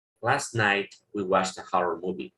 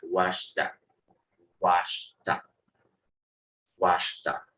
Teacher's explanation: El sonido de la ED, que ahí se pronuncia como T, se junta con la I y queda watched, watched, watched.